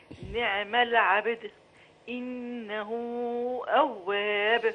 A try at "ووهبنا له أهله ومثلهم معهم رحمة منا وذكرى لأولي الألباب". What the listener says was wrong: ما شاء الله، جهد مشكور وتقدم كبير، الله يفتح عليك.